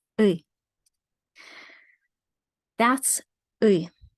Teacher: That's ui. It's a very deep sound that goes deeper than e. It's a very tense sound as well, a unique one.